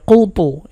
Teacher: এই কফ এবং ত কিন্তু মোটা করে উচ্চারণ করতে হবে